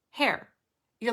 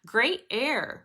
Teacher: You're like really just like pushing air quickly out of your throat to start the word. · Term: H sound